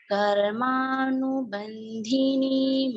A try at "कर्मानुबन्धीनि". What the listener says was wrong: बहुत अच्छा मैम, बस बंधिनी में धी छोटा हो गया आपका। कर्मानुबंधीनि, बंधीनि।